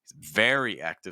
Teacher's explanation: Notice the difference in pitch there and also stress words. He's very active, so we stressed very.